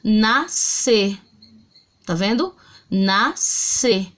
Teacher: Eu escuto o som do N e do A, ó, na. Eu escuto o som de um fonema só, S.